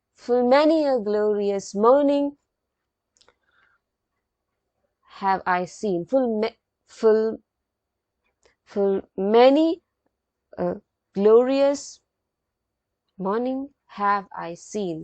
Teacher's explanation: it comes in the form of unstressed followed by stress syllable